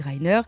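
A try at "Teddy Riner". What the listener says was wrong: Il est français, hein, on dit Rainer. Tu confonds avec Jérémy Rainer.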